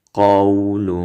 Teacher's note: قاف په ډکه خولو او به نرم وایي او ترنین کې به یې اخفا وکئ.